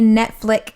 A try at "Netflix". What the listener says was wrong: That's different. There's no S at the end of Netflix. Netflix. Netflix. Netflix.